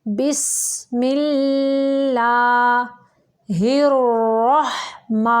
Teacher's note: را موٹا پڑھیں گے، ہا کو واضح نکالیں گے، ماں کی آواز کو منہ سے نکالیں گے، ناک کی طرف نہیں نکالیں گے۔